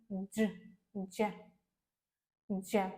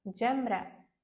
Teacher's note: така як д і ж в поєднанні але більш м'ягенька